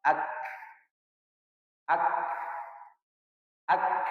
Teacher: ketika mengucap huruf kaf dengan ta, maka dia yang pertama sekali adalah keluar sifat syiddah, yang kedua keluar sifat hams.